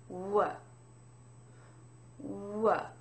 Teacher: most of the sound is in your lips w w your tongue is uh somewhat relaxed okay it's not totally flat but it's not really moving around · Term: W sound